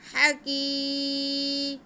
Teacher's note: आतल अलीमुल हकीम, हा पे ज़बर, काफ के नीचे ज़ेर और या साकिन, ये भी या मद्दा है, इसे हम काफ को खींच के पढ़ेंगे